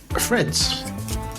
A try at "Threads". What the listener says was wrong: So you said Fred's for FR, not TH.